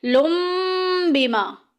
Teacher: لن کے آخر میں جو نون کی آواز ہے ہم اس کو میم سے بدل دیں گے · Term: اقلاب